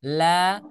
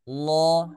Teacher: La suaranya tipis. Lo suaranya tebal.